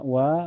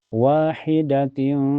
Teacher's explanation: Karena ada fatah berdiri di wa dibaca panjang dua harakat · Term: mad thobii